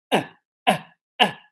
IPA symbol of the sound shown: ʌ